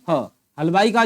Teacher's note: हलवाई का जो ह है इसे हम काकल्य वर्ण कहते हैं